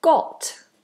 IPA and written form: gɒt (got)